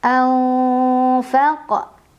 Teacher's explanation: Ada ikhfa awsat karena ada nun sukun bertemu dengan huruf fa. Cara membacanya nun sukun dibunyikan samar-samar menuju huruf fa sambil berdengung. Anfaq. Huruf qafnya qalqalah sugra.